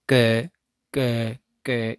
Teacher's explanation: ये जो पीछे वाला हिस्सा है ये उठकर ये जो आपका सॉफ्ट पैलेट है यहाँ पर टकराता है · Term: वेलर